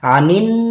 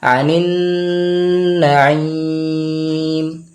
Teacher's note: নুনে তাশদীদ গুন্না করব আনিন গুন্না হবে